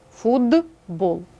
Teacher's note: глухі приголосні перед дзвінкими одзвінчуються тобто міняються на свою дзвінку пару наприклад слово футбол так глухий т та дзвінкий б наступний приголосний